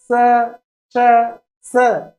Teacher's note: जबकि स्वर तंत्रों में कंपन की बात करें तो आप देखिएगा स श स, ये जो तीन है ये अघोष हैं, मतलब इनमें स्वर तंत्र में या स्वर तंत्रियों में कंपन उतना नहीं है। किंतु जैसे यह की बात आती है आप देखिएगा स श स, कंपन इतना सुनने को नहीं मिलेगा।